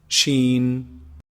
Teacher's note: the sheen is pronounced from the middle of the tongue the middle section of the tongue and the roof of the mouth